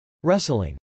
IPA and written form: rˈɛslɪŋ (wrestling)